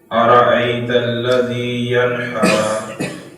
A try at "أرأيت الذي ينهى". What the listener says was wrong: یہ جو ینہا ہے یہ حلق سے نہیں آئے گا ینہا سینے سے ینہا